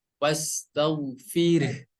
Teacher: huruf H besarnya di sini suaranya harus mengalir dan napas juga harus mengalir. Wastagfir. Jadi fir gitu dah mengalirnya seperti itu.